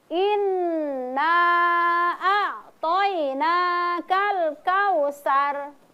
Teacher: Inna a'toinakal kautsar. Jadi inna nunnya berharokat fathah, kemudian di depannya ada alif. Maka cara membacanya 2 ketukan.